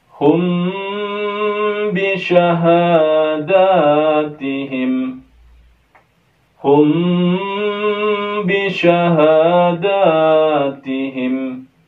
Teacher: Di sini terdapat ikhfa syafawi. Jangan lupa kita dengungkan di mim sukunnya sebanyak dua harokat.